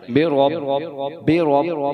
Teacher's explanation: اب با کو 2 دفعہ پڑھا جائے گا، کیونکہ تشدید والا حرف ہمیشہ 2 دفعہ پڑھا جاتا ہے